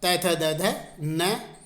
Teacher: इनका उच्चारण स्थान होता है दंत, अर्थात ये दांत के द्वारा बोले जाते हैं।